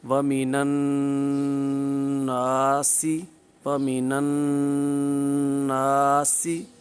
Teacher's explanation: الف سے پہلے زبر موجود ہے تو الف مدہ ہے، مد اصلی ہے، لہٰذا اس کو دراز کریں گے۔ نون کو جب پڑھیں گے تو نون کو الف مدہ کی وجہ سے ایک الف دا دراز کریں گے۔ وَمِنَ النَّاسِ، وَمِنَ النَّاسِ، معروف بھی پڑھا، نون پر تشدید تھی، غنہ کیا، الف مدہ کی وجہ سے نون کو دراز بھی کیا، سین پر سیٹی کی آواز بھی آئی۔